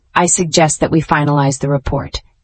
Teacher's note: notice the falling intonation